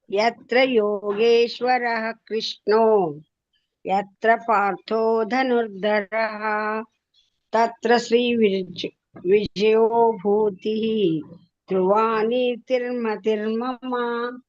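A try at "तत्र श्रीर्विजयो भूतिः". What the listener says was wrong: ಇಲ್ಲಿ ಮೂರನೇ ಚರಣ ಮಾತ್ರ ಶ್ರೀರ್ ಆದ್ಮೇಲೆ ವಿಜಯೋ. ತತ್ರ ಶ್ರೀರ್ವಿಜಯೋ ಭೂತಿಃ.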